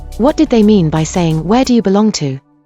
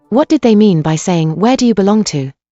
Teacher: the intonation of belong to is the same no matter where the question mark is placed